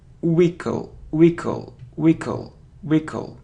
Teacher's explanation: So we don't pronounce h.